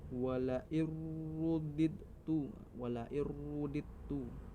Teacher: Selanjutnya ro tafkim. Cara bacanya harus dibaca tebal dengan bibir sedikit monjong ke depan. Contohnya Al-Kahfi ayat 36 di bagian wala'ir rudidtu.